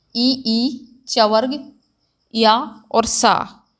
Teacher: तालु यानी कि तलवे से। तलवे से किस किस का उच्चारण होता है, इसमें आ जाता है ई चवर्ग या और सा। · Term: तालव्य